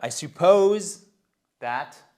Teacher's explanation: vous voyez que c'est sur la seconde syllabe